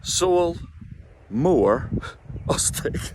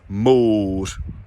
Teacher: consciously make that long, pure vowel sound, like one note